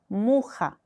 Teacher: 약간의 이 목을 긁는 소리도 나요